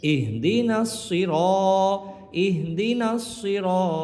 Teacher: সি, র আলিফ জবর র, জবর পরে খালি লিফ আছে আর র এর উপরে জবর থাকার কারণে র হরফটা মোটা উচ্চারণ করব